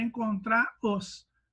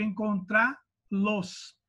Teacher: Eu vou ficar com a palavra encontrar e, obviamente, vai ter acento, porque ele vai ficar sendo uma oxítona terminada em A. Então, o R, ele some do final do verbo e o pronome os, né, acaba ganhando um L por questões de pronúncia.